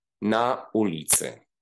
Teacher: the second word starts with a new attack, with a glottal stop